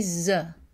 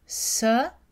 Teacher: ZE est la version voisée de ce c'est la même consonne mais ze utilise des cordes vocales